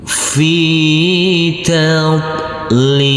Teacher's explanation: Fi, huruf fa yang berkasroh i, karena bertemu dengan huruf ya sukun, maka huruf fa kita baca panjang dengan panjang 2 harokat.